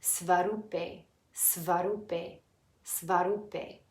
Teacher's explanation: The flat line lengthens the oo sound, and the E is pronounced a